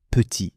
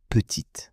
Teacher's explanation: on ne prononce pas la consonne finale dans petit, mais on la prononce dans petite